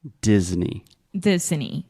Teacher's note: this is a hard D at the beginning. So there's no J or G. It is D. Disney.